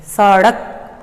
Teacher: इस स को जब हम बोलते हैं तो हमारी जीभ वो नीचे वाले दांतों को स्पर्श करती है